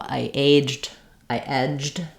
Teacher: So for example, I aged, I edged, have the same pronunciation with that j sound and the d sound right together. There's no sound in between. So for most of the time you're using this word, it's going to be just pronounced as one syllable, aged.